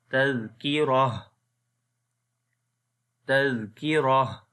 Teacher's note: مثال کے طور پر تذکیرت، رت کے اوپر سٹاپ نہیں کریں گے بلکہ یہ تا ہا بن جائے گا، تو اس کو پڑھیں گے تذکیرہ، تذکیرہ۔